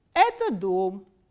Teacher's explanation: now we start from a middle medium pitch and it goes down towards the last stressed syllable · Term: international construction one